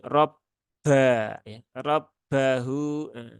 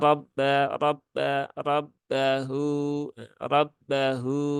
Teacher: jangan sampai ada percikan udara ya, karena ba dia tidak punya sifat hamas. Jadi jangan robba ya, robbahu, itu terlalu berlebihan ya.